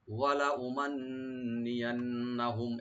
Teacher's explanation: এখানে লামে কোনো টান হবে না, নুন মুসাদ্দাদ দুইটা এখানে গুন্না হবে, আর মিম সাকিন এখানে এজাহার হবে।